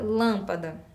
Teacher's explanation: a sílaba forte tá lá no início Lan é um som fechada